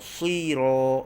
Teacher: ra baris atas, maka kita baca dengan tebal, tafkhim